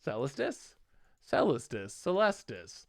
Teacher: The stress is on the second syllable, not the first one.